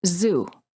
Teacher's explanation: you should feel a vibration in your vocal cord this is how you know that the z sound is voiced